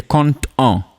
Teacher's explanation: in a case where this word ends with consonant D and the next one starts with a vowel O, then we pronounce this D